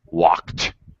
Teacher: k sound is just i'm not actually voicing it um then the pronunciation of the ed is actually a t sound · you don't actually use your vocal cords, you're just breathing, like walk, the K sound is just, I'm not actually voicing it.